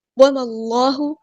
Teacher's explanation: اللہ کا جو لام ہے وہ ہیوی موٹا ادا کریں گے کیونکہ اس سے پہلے فتح یعنی زبر آئی ہے، بِغَافِلٍ، الف